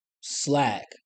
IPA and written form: slæk (Slack)